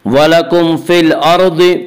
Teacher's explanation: अल अर्द की रा को पुर पढ़ेंगे।